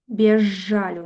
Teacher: Прычым, што Ж у нас стане падоўжаным. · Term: асіміляцыя па свісцячасці і шыпячасці